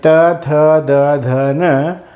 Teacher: त, थ, द, ध, न म्हणताना दाताला जीभ लागते म्हणून त्यांना दंत्यवर्ण म्हणायचं.